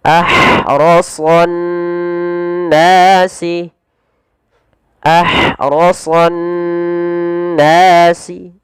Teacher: alif lamnya diidghamkan kemana? Ke nun, sehingga ditasydidkan nunnya. Maka cara membacanya ditahan suara nunnya. · panjangkan nas panjang 2 harakat karena ia mad tabi'i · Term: alif lam syamsiyah, idgham syamsiyah